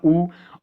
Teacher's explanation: ऊ अगर आप उच्चारण करो तो मुंह जरा गोल होता है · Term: वृत्तमुखी